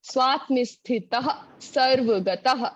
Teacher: वो विसर्ग का उच्चारण कंठ से होता है